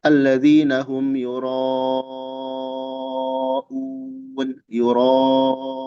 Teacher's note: itu mad tobi menghadapi hamzah pada satu kata. Dia panjangnya 4 atau 5 harokat. Boleh 6 kalau dia berhenti. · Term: mad muttasil